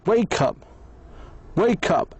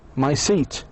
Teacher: There is no pose. In fact, the middle consonant sound is shared so perfectly with both the first and the second words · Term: link